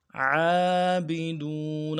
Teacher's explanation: عین کو گہرائی سے ادا کرنا ہے، موٹا ادا کرنا ہے